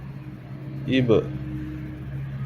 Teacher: ان حروف پہ اگر جزم ہو، سکون ہو، تو پڑھتے وقت ان کا مخرج ٹکر کھا کے الگ ہو جاتا ہے، یعنی ہونٹ ایک دوسرے کے ساتھ ملتے ہیں اور پھر الگ ہو جاتے ہیں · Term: قلقلہ